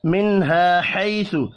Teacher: نون ساکن کے بعد ہا ہے, اظہار حلقی ہوگا, غنہ نہیں ہوگا